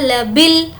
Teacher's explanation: अलिफ को स्किप कर देंगे, बा को लाम से मिलाएंगे